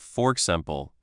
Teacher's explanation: It can sound like fork simple. The r from for links to the e of example.